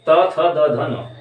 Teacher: जिवा जो है वो दांतों को टच कर रही है